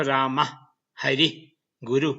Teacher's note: For the pronunciation of the visarga and anuswara, please refer to the reference section of the website. The visarga is pronounced as a voiceless h and is articulated at the tongue position of the previous vowel.